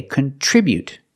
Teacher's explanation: With the verb, we say contribute. We put the stress on the second syllable.